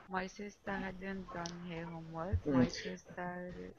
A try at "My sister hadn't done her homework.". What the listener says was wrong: Hadn't. So the second sentence, basically, you don't say the H. So my sister hadn't done her homework. My sister hadn't done her homework. So the H is dropped. You don't hear it.